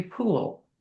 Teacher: They're going to keep that L right behind the front teeth. It's going to be the clear or light L.